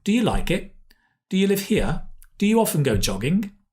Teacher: it's a rising intonation